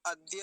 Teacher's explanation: द कैसे बनता है ये आप जानते हैं संयुक्त वर्ण है ये द का हलंत और य का इन दोनों से मिलकर बनता है द बोलेंगे ना कि ध